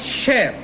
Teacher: और श, ये जो श है इसका उच्चारित स्थान भी तालु है